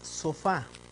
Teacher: aquí está su acento en la última en la última sílaba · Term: aguda